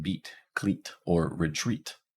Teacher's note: the high front unrounded tense fowel makes an e sound like as in beat cleat or